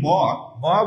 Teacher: এই যে নাসিক্য ধ্বনিটা, এটা কিন্তু আমাদের একটু বুঝতে হবে যে নাসিক্য ধ্বনিগুলা এগুলো হচ্ছে কি, নাক এবং মুখ থেকে একসঙ্গে বাতাস বের হবে। · আমরা যদি বলি ম ম বলে একটু নাকটা বন্ধ করলে বুঝবো যে নাকে এসে কি করছে, ধাক্কা দিচ্ছে। তাহলে এই ম হচ্ছে কি নাসিক্য বর্ণ, অর্থাৎ নাসিক্য যে ধ্বনি উচ্চারণ করার সময় নাক এবং মুখ থেকে বা শুধু নাক থেকে বাতাস বের হবে সেটা হচ্ছে কি নাসিক্য।